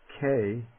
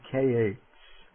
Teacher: the aspirate has the same basic sound as the non-aspirate, except that there is a little puff of air that comes after it. That is why it is called an aspirate.